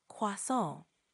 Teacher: Try emphasizing the nasal sound at the end a bit more